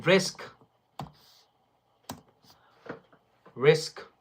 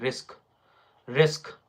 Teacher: R, then short E sound, then s sound, then k sound.